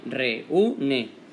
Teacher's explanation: la E, re, se ha separado de esta U, que va sola en una sílaba aparte, y después, por último, la ne, reúne. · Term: hiato